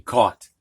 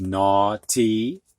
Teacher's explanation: We don't hear the GH, it's just like C-A-U-T, caught.